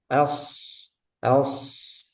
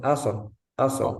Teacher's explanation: ini sod dia punya sifat rokhawah. Jadi suaranya mengalir.